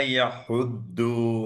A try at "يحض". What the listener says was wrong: এই যে ইয়াহুদ্দু, এখানে দদের মাখরাজ, এই দদের মাখরাজটা খেয়াল করো, মোলার, তোমার মোলার টিতে টাচ করতেছে না, হ্যাঁ, তোমার সামনে দালের জায়গাটায় টাচ করতেছে। মোলার টি, দু, দু, ইয়াহুদ্দু, ইয়াহুদ্দু, ইয়াহুদ্দু। দটা একটু ডিফিকাল্ট আমাদের বাংলাদেশিদের জন্য স্পেশালি। দ, দ, দ,